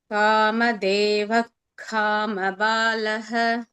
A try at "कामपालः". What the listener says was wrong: कामपालः. नो महाप्राण here.